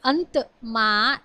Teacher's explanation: પછી અંતમાં એ દંત્ય અનુનાસિક સ્પર્શ વ્યંજન છે ન, અને એ ન લિપિ ચિહ્નથી આપણે એને દર્શાવીએ છીએ.